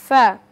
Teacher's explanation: আমরা তার পরের হরফ এখানে দেখতে পাচ্ছি ফা। ফা উচ্চারণের স্থান নিচের ঠোঁটের পেট, সামনের উপরের দুই দাঁতের আগার সঙ্গে লাগিয়ে